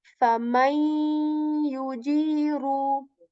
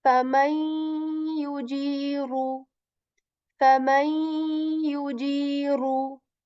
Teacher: We are assimilating their sounds and saying my, right? So the sound of the noon sakin is kind of skipped, but the nasal of this letter remains.